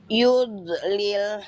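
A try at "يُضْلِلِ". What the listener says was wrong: Nah, itu agak lepas di ujung tuh. Makhrajnya tuh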